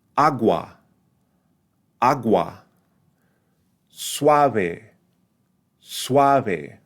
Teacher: the U here is going to sound like a kind of a weakened W aa aa Suave Suave so we're slightly opening giving more emphasis · So we're slightly opening, giving more emphasis to the second vowel in the combination. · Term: rising diphthong